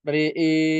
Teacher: ketika dia dibaca waqaf maka maka diimalahkan ro dan hamzahnya ya. Misalkan kita wakaf re e seperti itu.